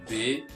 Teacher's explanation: b é um som mais vozeado porque encontra as membranas das cordas vocais juntas portanto a massa do ar atravessa com dificuldades provocando ali uma